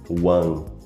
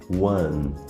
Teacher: O correto seria one, terminando o som com a língua tocando o céu da boca.